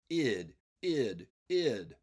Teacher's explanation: the third ending ID is a complete syllable with a vowel sound and a consonant sound together